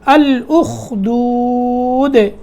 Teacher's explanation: دال میں قلقلہ کرنا ہے وقف کرنے کی صورت میں